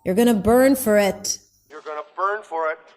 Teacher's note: He leaves his intonation kind of like up hanging, which means, just wait and see.